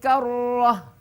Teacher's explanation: Idan karratun Idan Karah ya Kalau berhenti boleh dibaca ha ya Ta marbutah diganti menjadi ha ya dan dibaca mati